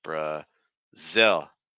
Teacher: tongue is staying down to make that dark l